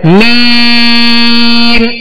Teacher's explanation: میم کو ادا کرنے کے بعد جو مد کی آواز ہے اس بات کا خیال رکھیں کہ یہ ناک کی طرف نہ لوٹے ، جیسے میم ایسے نہیں، میم منہ سے آواز نکلے، میم